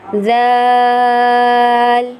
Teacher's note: ذال کو نرمی کے ساتھ زبان کو دونوں دانتوں کے درمیان میں لا کر نرمی کے ساتھ ذال